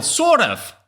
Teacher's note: However, in Scottish accent, they pronounce the R.